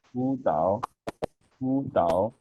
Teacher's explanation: The first third tone will change into the second tone.